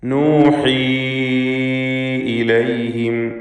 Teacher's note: യാഇന് മദ് മുൻഫസിൽ ജായിസ് നൽകി 4-5 ഹറക്കത്തിൻ്റെ അളവിലുള്ള ദീർഘം നൽകണം.